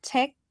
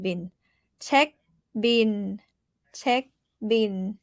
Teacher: Check is high tone. Check, and bin is mid tone.